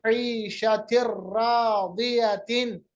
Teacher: इसी तरह ईशतिर रादियतिन, ईशतिर दो जेर के बाद रा, तनवीन के बाद रा, इदगाम बिला गुन्ना, मदगम किया, और जो नून की आवाज है वो बाकी नहीं रही